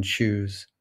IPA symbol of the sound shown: tʃ